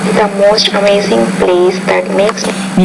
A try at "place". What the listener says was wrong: you have to make that vowel sound longer.